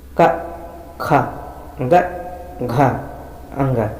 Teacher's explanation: का वर्ग का उच्चारण स्थान कंठ से होता है।